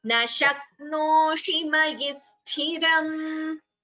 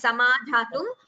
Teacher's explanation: So this sha should be heard as sha and not as sa.